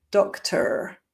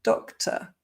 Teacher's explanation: it's what we call non-rhotic, where the R is usually not pronounced. So I don't say doctor, but doctor.